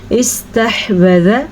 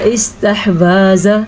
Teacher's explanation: ذال اور واو کو لمبا نہیں کرنا۔ بعض لوگ پڑھتے ہیں استحوذ یا استحواذ، تھوڑا تھوڑا بھی لمبا نہیں کرنا، بالکل چھوٹی سی مقدار ہوتی ہے۔